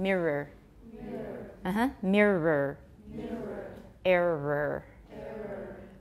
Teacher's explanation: a lot of you pronounce the O and you should just pronounce a schwa.